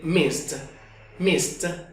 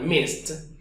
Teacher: al ponerlo en pasado tendremos el sonido de mist mist como una t al final